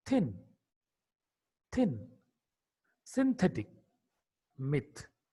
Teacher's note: Th is a voiceless dental fricative consonant.